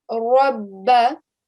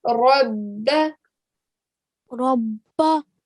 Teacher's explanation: I gave it a thick, sort of a round mouth. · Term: thick sound